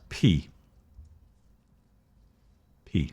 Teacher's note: It's coming from the front of your mouth. It's your lips going P.